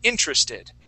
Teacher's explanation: So our accent is actually going to go at the very beginning. Instead of in the middle of the word, we say interested.